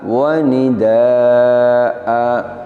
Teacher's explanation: Kita ingat kembali kaidahnya bahwa apabila kita wakaf pada satu lafadz yang huruf terakhirnya adalah fathatain, fathah tanwin, maka cara wakofnya adalah dengan mengganti fathatain dengan fathah panjang. Jadi fathatain ini ketika wakof kita baca panjang, sama panjangnya dengan mad asli atau mad tabi'i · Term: mad iwad